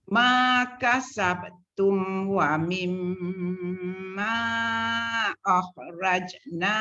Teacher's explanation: Wa mim tu dengung dulu sebelum ma.